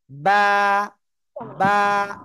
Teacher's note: দুই ঠোঁটের ভিজা অংশ থেকে উচ্চারিত হয়